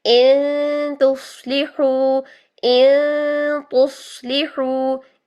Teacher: तो यहाँ पर ता आपने डायरेक्शन फौरन सेट कर ली, हमजा की हरकत अदा की और ता की डायरेक्शन सेट कर ली, इन तुस्लिहु, यूं, फिर नून की आपने साउंड को छुपाया, ता की डायरेक्शन को सेट करने के बाद नून की आवाज को 2 सेकंड के लिए छुपाया, और फिर नंबर 4 पॉइंट के आपने ता को अदा कर दिया।